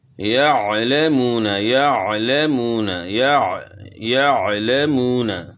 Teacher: تو عین کو گلے کے درمیان سے ادا کرنا ہے۔ اس کا یہ مطلب نہیں کہ آپ گلے گھونٹ لیں، عین کو اچھے طریقے سے ادا کرنا ہے، آسانی کے ساتھ ادا کرنا ہے، تکلف بیچ میں جو ہے نہیں ہونا چاہیے، اور تجوید کے اندر کسی حرف کے اندر تکلف نہیں ہونا چاہیے۔